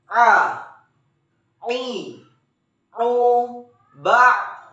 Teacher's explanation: Huruf A keluar dari tengah tenggorokan